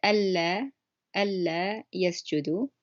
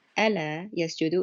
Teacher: it's a double L sound on the first word that I said · It's a lighter L sound, and it changes the meaning.